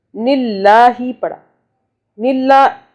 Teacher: اللہ ہے یہاں باریک پڑا جائے گا، کیوں کہ اللہ سے پہلے نون کے نیچے دیکھیں زیر آ رہا ہے۔